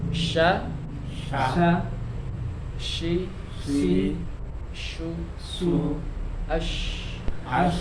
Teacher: jadi lidah tengahnya agak agak naik ya dirasa lidah tengahnya agak naik